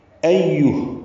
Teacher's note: ایوہ، حمزہ کو یا سے ملانا ہے، حمزہ اقصی حلق سے ادا کریں گے